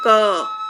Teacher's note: जब हम क का उच्चारण करते हैं तब अंत में अ स्वर सुनाई देता है, जैसे क, तो क के बाद अ की आवाज आ रही है।